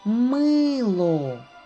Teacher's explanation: два приголосних твердих м л два голосних и о два склади перший склад наголошений наголос падає на звук и